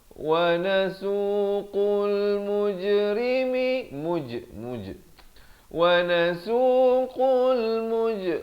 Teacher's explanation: ونسوق المجرمين ri jadi nipis, mi dua harakat.